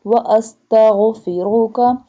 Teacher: ghain pronounced from the top part of throat